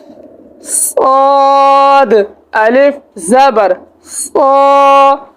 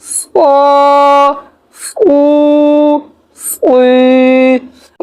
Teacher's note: ہمارے صاد کو ادا کرتے وقت ہمارے ہونٹ گول نہیں ہونے چاہیے اور سیٹی کی طرح تیز آواز نکلنی چاہیے